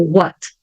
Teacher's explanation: quando eu falo a palavra What isolada o som do T ele sai mesmo que saia mais fraco